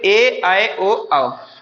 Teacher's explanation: ऐसे स्वर जो दो अलग अलग भिन्न भिन्न स्वरों के योग से बने उसे हम संयुक्त स्वर कहते हैं